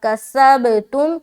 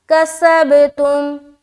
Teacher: سین کو با سے ملاتے ہوئے قلقلہ